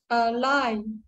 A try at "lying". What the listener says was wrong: No ing. L-Y and then ing.